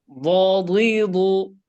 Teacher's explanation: উচ্চারণটা জিহ্বার গোড়ার কিনারাটা দাঁতের মাড়িতে লাগতে হবে, জিহ্বার আগা দিয়ে না। হ্যাঁ, জিহ্বার গোড়ার কিনারা জিহ্বার গোড়ার কিনারা উপরের মাড়ির দাঁতের গোড়ার সঙ্গে লাগাইয়া।